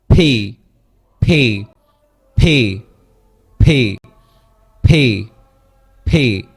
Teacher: এটা হচ্ছে অ্যাসপিরেটিভ সাউন্ড। এখানে হচ্ছে মুখের ভিতর থেকে একটা বাতাস বের হবে, আমরা এখানে জাস্ট হার্টটা আপনি দিতে পারেন।